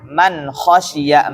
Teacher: Sebagian ya orang itu menikhfakan huruf ini mal khasyiya. Namun kha itu izhar ya. Kha itu izhar harus jelas. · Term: huruf izhar